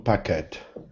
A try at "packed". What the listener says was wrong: Now that word, packed, it sounds like a T on the end and not an ED. It's one syllable word, packed. Packed.